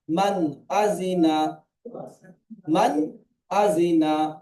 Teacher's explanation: মিমের উপরে জাবার আছে, জাবারটি হলো হারাকাত, হারাকাতকে টান না দিয়ে তাড়াতাড়ি পড়তে হয়। নুনের উপরে সাকিন আছে, নুন সাকিনের পরে, নুন সাকিনের পরে হরফে হালকির 6টি হরফের মধ্যে একটি এসেছে হামজা, তাই নুন সাকিনকে বিনা গুণনায় জাহির করে তাড়াতাড়ি পড়তে হয়।